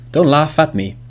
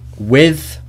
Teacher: So laugh, the last sound is F, and at obviously is a vowel, A. So laugh at me. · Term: linking